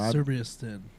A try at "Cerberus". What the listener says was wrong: See, you said it. You said it like I said it, and it's wrong because you added 2 R's. Cerberus.